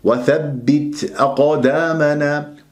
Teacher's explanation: وأقدامنا القاف مقلقلة ساكنة في وسط الكلام صغرى